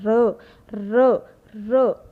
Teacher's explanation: जो आपकी जीवा है वो कंपन पैदा करती है, इसलिए र परिकंपित और लुंठित वर्ण है।